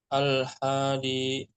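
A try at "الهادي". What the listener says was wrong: Haknya pendek Pak, maaf.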